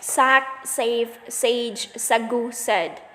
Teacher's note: Voiceless alveolar sibilance S.